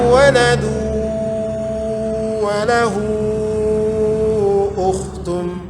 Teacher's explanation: tanwin berjumpa dengan waw idgham bi gunnah, dimasukkan ke huruf waw kemudian disertai dengan berdengung